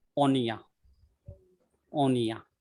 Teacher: So that O is also a very short sound, short half vowel.